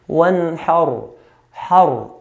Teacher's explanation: Last part here, we have the ra sukun. So the previous letter has a fatha, so we're going to make the ra heavy.